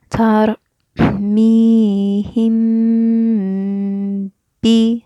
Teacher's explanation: we just kind of hold that meme for two harakat before we go to the b. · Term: gunna